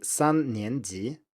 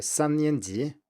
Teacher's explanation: So that's first tone, second tone, second tone.